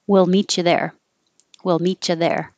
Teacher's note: in regular time people aren't taking the time to go wheel they just make it shorter and the tongue gets flatter and it sounds like will